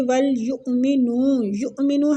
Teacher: حمزہ پہ جھٹکا لیں گے، نون کو کھینچیں گے